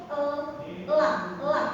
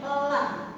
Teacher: Jadi lam sukun itu lidah ujung lidah ada di gusi di gusi atas.